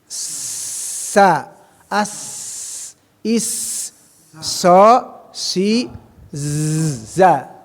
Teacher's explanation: mahrojnya ujung lidah bertemu dengan gigi seri agak ke bawah. Hampir sama ujung lidahnya mah dengan sa.